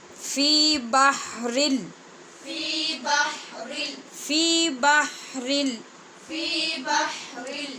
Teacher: آگے لام ہے حروف یرمالون میں سے جس میں بے غنہ ادغام ہوتا ہے، جہاں پہ غنہ بالکل نہیں ہوتا، اس لیے بحرل پڑھا جائے گا.